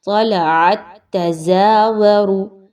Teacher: پچھلی تا کو آپ نے اگلی تا کے ساتھ ملانا ہے، کیسے؟ مضبوطی کے ساتھ، طَلَعَتْ تَزَاوَرُ، اس چکر میں آپ کی آواز تھوڑی دیر کے لیے ایسے لگے گا جیسے بند ہو گئی ہے، لیکن آپ نے اس کو اچھے سے مضبوطی کے ساتھ ملانا ہے۔